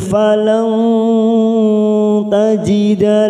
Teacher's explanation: nun sukun bertemu ta Ikfa Hakiki falant ta kita samarkan tiga Ketuk